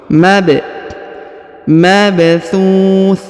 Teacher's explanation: huruf ba dibaca pantul atau Qalqalah karena berharakat sukun